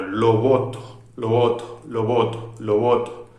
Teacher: No cierro, sigue siendo una aproximante, porque aproximo los labios, pero no los cierro, bilabial, como siempre, sonora